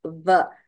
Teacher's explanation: Va, dantoshtham, the lips and the teeth are used to pronounce va.